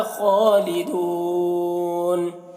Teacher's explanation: خالدون خا کو پر پڑھیں گے اور کھڑا زبر ہے، کھینچ کر پڑھیں گے